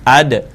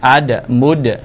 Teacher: แต่ว่าเวลาอ่านหยุดของตัวด้าเนี่ยนะครับมันสะท้อนเสียง